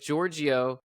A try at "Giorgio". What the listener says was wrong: Giorgio, Giorgio, Giorgio. It's like it's two syllables. Not three in there. Giorgio. like George, like George. George.